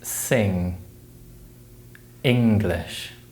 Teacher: The ng sound is similar, but the air is blocked with the back of the tongue, and it's usually spelled with the letters N and NG in words such as sing, English.